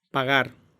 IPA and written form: paˈɣ̞aɾ (pagar)